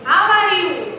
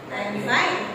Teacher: greetings these are the greetings how are you I am fine how are you that is in rising tone but I am fine is falling tone